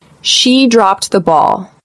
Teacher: notice how the Ed ending has a very very slight sound of a t here